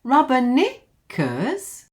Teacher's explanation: it rises and falls and rises.